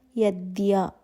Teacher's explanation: ద sound అలాగే య sound ప్రతిసారి రెండు సౌండ్స్ వినిపిస్తేనే అది కరెక్ట్ ప్రొనౌన్సియేషన్ అవుతుందండి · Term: సంయుక్తాక్షరాలు